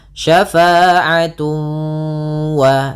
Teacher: ditahan suara wawnya. Syafa'atun wa sambil dimasukkan ke rongga hidung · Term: idgham bi gunnah